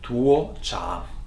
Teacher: Tuocha is 2 rising tone